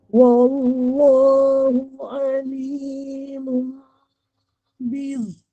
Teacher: Zo ini huruf yang jahar Huruf yang jahar maksudnya nafas tertahan, nafas tertahan.